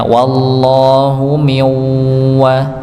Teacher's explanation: Ya, kebetulan pada kata wallahu wawunya dibaca dengan harakat fathah. Maka ketika dia bertemu dengan lafaz Allah, maka Allahnya dibaca tebal · nun sukun ketemu huruf wawu, maka dibaca dengung idgham bi gunnah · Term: lafzul jalalah